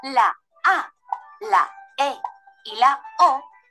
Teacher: la a la e y la o son vocales abiertas se llaman así porque para pronunciarlas abrimos la boca